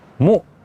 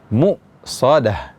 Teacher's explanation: Muqsadah, ya, ini ada sifat syiddah. Mu, langsung berhenti bunyi huruf hamzahnya